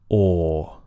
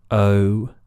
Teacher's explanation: So you could say that the goat vowel is long and sliding